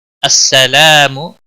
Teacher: السلام لا الف مدہ ہے، ایک الف کے برابر کھینچ کر پڑھیں گے، منہ کو کھینچنا نہیں